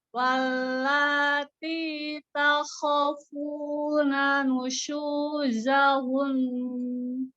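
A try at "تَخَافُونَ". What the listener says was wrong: Takhafuna, takhafanya panjang. Coba lagi.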